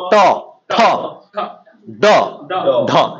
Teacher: এই চারটা বর্ণে কিন্তু একদম মাঝামাঝি মূর্ধন্যতে জায়গা লাগতেছে